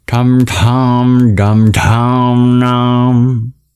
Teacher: Then we have all the retroflexes, which is formed by curling your tongue back.